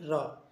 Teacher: इसके उच्चारण में जीव कंपन करने लगती है। जिसे हम बोले र तो जीभ कंपन करती है · जब हम बोले रा तो जीभ कंपन करती है, इसे लुंठित व्यंजन कहते हैं। इसलिए प्रकंपी व्यंजन या फिर कंपन जात व्यंजन भी कहते हैं।